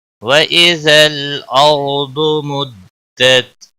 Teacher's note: وَإِذَا لام ساکن کو ہلانا نہیں، باقی کسی بھی حرکت والے حرف کو کھینچنا نہیں، اور را ساکن سے پہلے زبر ہے، اس لیے را موٹا پڑا جائے گا